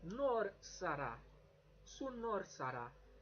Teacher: The R's, you notice, are sort of a tap, a bit like the Spanish r, r. So just rolling the tip of your tongue.